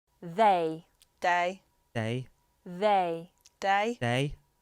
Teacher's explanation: Another feature that may sometimes change is the TH. In standard British English, it's the, but in Scouse we have d.